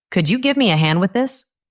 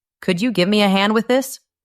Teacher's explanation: It goes up at the end.